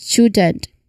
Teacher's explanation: when a T sound is followed by a Y sound, they can merge to create a ch sound